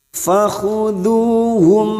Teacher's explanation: mim sukun bertemu wawu idhar safawi mim sukun dibaca jelas tanpa mendengung. Fakhuduhum waqah huruf qaf sukun yang mati asli di tengah kalimat qalqalah sugroh.